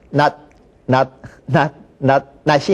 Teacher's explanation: 표기상으로는 구별이 되지만 그냥 다 발음할 때는 낫 그렇게만 발음이 되는 거죠.